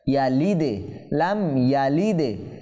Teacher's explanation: হরফে কলকলা সাকিন হয়েছে, কম্পন সৃষ্টি হবে, প্রতিধ্বনি হবে